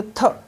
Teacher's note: थ जो है वो दंत है, महाप्राण है, स्पर्श भी है। ठीक है, लेकिन घोष नहीं है, मतलब अघोष वर्ण है ये।